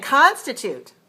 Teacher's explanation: You have constitute, 3 syllables, and it's stress on the first. So we say constitute.